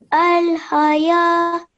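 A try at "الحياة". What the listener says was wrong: Good. Al-hayatu.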